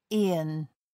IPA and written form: ˈiːɒn (aeon)